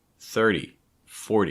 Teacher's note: t sounds that come after an r and before a y they're often going to become like a fast d or a flat t sound